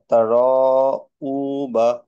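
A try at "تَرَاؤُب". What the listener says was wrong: আচ্ছা, আমরা এটাকে তাতে একটু মাদ দিতে হবে। তা, র, উ, এরকম, হ্যাঁ। তা, র, উ।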